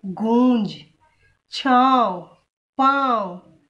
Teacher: इसका उच्चारण नाक और गले दोनों से होता है · नाक और गले दोनों से आ रही ना इसकी आवाज। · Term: अनुनासिक